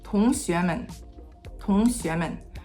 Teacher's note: the tone 2 actually doesn't reach its max height like it normally does, and it actually stops short of it, followed by a slightly lower qingsheng.